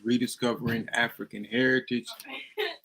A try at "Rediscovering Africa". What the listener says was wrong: It's Rediscovering Africa, not with an N.